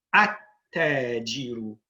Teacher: when we add the alif and lam, we do not pronounce the lam. Rather, we put a shadda on the ta, and we pronounce that twice. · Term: sun letter